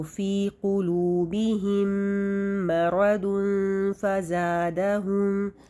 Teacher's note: میم ساکن کے بعد میم ہے، یہاں پر کیا ہو جائے گا؟ ادغام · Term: ادغام شفوی